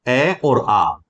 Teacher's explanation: अ और आ कंठ से ही उच्चारित ध्वनियां है इसलिए इन्हें हम कंठे कहेंगे